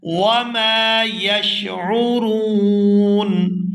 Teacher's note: وقف کی وجہ سے نون جو ہے وہ ساکن ہو جائے گا اور یہاں نون ساکن ہونے کی وجہ سے مد ہوگی تو یہاں کھینچ کر وقف کیا جائے گا